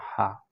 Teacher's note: جیم جو ہے منہ کے اندر سے ادا ہوتے ہیں، اور زبان کی درمیان جب آپ کے تالو کے ساتھ لگتے ہیں تو وہاں سے جیم ادا ہوتا ہے. ہا گلے کے نچلے حصے سے ادا ہوتی ہے، اور گلے کے نچلے جو سب سے آخر کا حصہ ہے، نرم جگہ ہے، یہاں سے ادا ہوتا ہے ہا.